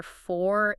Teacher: If a British speaker says the number four, it is completely non-rhotic.